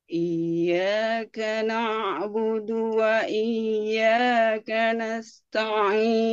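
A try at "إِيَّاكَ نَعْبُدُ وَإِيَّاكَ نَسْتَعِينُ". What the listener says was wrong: Iyyaka na'budu. Na'budu. Nah, na'budu juga agak naik ya, sedikit. Iyyaka na'budu.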